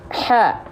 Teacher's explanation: harus berbisik ya dan pasti berbisik kalau tepat melafalkannya tepat dari tengah tenggorokan hak nafasnya pasti berbisik atau seperti orang kepedasan makanya disebut dengan